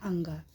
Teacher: बोलने में हवा केवल नाक से निकलती है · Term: अनुस्वर